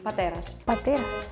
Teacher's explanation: Like no strong aspiration. We just say pateras, like a little bit soft aspiration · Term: voiceless stops